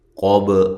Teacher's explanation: قاف کو موٹا کریں، با پہ قلقلہ کریں